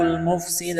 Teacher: سین میں سیٹی کی آواز پیدا کریں گے، سین کو باریک کرنا ہے